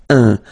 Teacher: So it's really a nasal, it goes in your nose